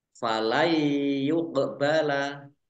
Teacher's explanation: fathah tanwin bertemu dengan huruf Fa bacaan Ikhfa dibaca samar-samar · nun sukun bertemu dengan huruf ya bacaan Idgham bighhunah masuk dengan mendengung yaitu mendengung ya Nun sukunnya tidak dibaca langsung masuk ke huruf